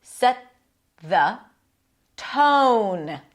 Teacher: T on the teeth, and then it releases to a TH